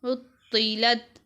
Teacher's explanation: یہاں پر طا کو پر پڑھیں گے اور تا کو باریک